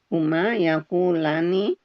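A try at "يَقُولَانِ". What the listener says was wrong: Ya, yakula, panjangan Bu. Yakulani.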